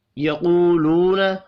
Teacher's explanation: قاف حروف مستعلیہ ہے، پر پڑھا جائے گا، دو واو مدہ ہیں، دونوں کو ایک ایک الف کے برابر کھینچ کر پڑھیں گے۔